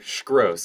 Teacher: their language is just English but they put an sh sound in front of everything